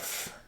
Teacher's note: That was our voiceless labial-dental. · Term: f sound